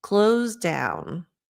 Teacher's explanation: the S sounds like a z close down CL close so it's more like o u just